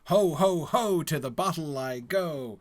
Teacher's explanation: we start off with the 3 presumably equally stressed hoes